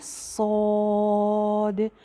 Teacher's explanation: पहले आवाज़ जो है वो सीटी की आएगी, ज़ुबान पीछे से ऊपर उठेगी, सौद। और अलिफ भी जो है वो इसका मोटा हो जाएगा।